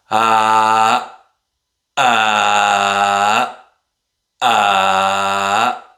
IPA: ʔ